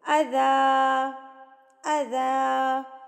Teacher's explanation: اب دیکھیں 2 زبر پہ آپ وقف کر رہی ہیں تو 2 زبر پہ جب ہم وقف کرتے ہیں تو یہ 2 زبر ایک الف بن جاتا ہے تو ہم اس کو لمبا کر کے پڑھیں گے